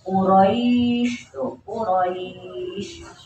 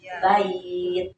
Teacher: Jadi kalau di ujung kalau kita wakaf itu jadi mad jadi dipanjangin ya tapi kalau di tengah-tengah itu hanya harapin saja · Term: madlin